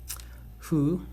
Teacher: we pronounce fu as slightly in the middle of H and F